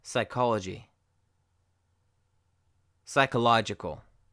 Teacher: the P is silent and it sounds like sigh.